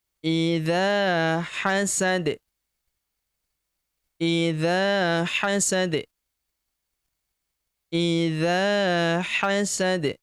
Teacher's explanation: Huruf da di ujung kita sukunkan karena ini adalah huruf berhenti. Kemudian karena dia sukun maka kita pantulkan atau kita qalqalahkan.